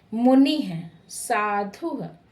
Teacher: विसर्ग जिसे ह के रूप में उच्चारण करते हैं। किसी शब्द में लगा करके अंत में लगता है और वह ह के रूप में उच्चारण के अंत से बालक वृक्षः इस प्रकार की बिंदी लगी रहेगी तो उसे हम विसर्ग कहते हैं। · विसर्ग का उच्चारण कंठ से होता है। इसकी ध्वनि ह जैसी होती है।